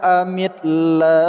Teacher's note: lafaz Allah kita baca secara tarqiq atau tipis kerana huruf sebelumnya berkat kasrah